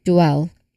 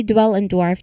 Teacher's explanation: So remember the W involves rounding your lips. So you're kind of like moving from the D sound to that quick lip rounding for the double U. So it's a single smooth movement. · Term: DW cluster